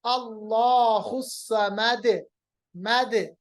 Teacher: کیونکہ دال ساکن بن گیا اس لیے اس پہ قلقلہ ہوا